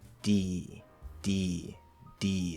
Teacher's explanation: there's a little bit of tension when I release the D. There's that little line of tension still as I'm in the E. D, D, D. And again, the back here is more open, okay?